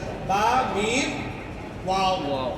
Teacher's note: बा और मीम दोनों होठ के मिलने से और वाव थोड़ा खाली रहने से